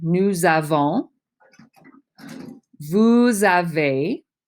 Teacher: because the pronoun ends in an s and the verb starts with a vowel it's a z